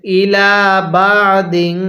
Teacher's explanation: এই লামের মধ্যে আমরা এক আলিফ টান দিব কারণ এখানে লামের উপর এই খাড়া চিহ্ন তাহলে ইলাদিন এরপরে এই